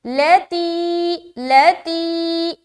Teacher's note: لام کو جلد کیونکہ زبر ہے، تی میں کھینچیں گے کیونکہ یہاں پر یا مدہ ہے